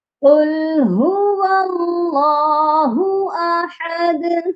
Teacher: دونوں ہاں کی ادائیگی سینے والے حلق سے ہوگی، اور احد اس والے ہاں کی ادائیگی درمیان والے حلق سے ہوگی، اور دال پر ہم قلقلہ بھی کریں گے کیونکہ دال حروف قلقلہ ہے اور اس پر ہم رک رہے ہیں، اسی لیے یہاں پر قلقلہ بھی ہوگا۔